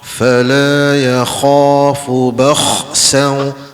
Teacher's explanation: Huruf kha ni dia ada angin, sebab dia bersifat hamas ya.